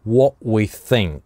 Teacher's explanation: What здесь гортанная смычка, потому что дальше /w/, согласный